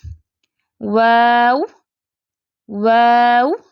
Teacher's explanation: दोनों होठों को आगे बढ़ाकर छोटा गोल दायरा बनाने से वाऊ गैर मदि अदा होता है आपको यह पिक में नजर आ रहा है इतना आपने छोटा